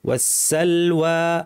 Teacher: এই ওয়াটা অনেকের ভারী হয়ে যায় অনেকে বলেন ওয়াসালওয়া এরকম বলেন পাতলা হবে